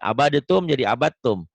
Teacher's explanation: Dal mati ketemu tak. Nih abadatum jadi abatum. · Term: idgham mutajanisen